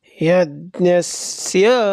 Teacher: तो यज्ञस्य यहाँ पर य अनुदात है और स्य स्वरित है